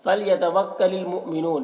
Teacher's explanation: हमज़ा साकिना झटका लगेगा और वक्फ करेंगे, यहाँ पर तो मद्दे आरिज़ वक्फ़ी होगा।